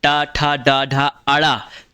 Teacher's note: ट वर्ग में क्या होता है मूर्धन्य होता है